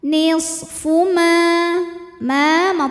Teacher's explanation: Nisfu ma tabi'i zahiri, karena ada alif didahului fathah, maka mim panjang dua harokat. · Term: mad tabi'i zahiri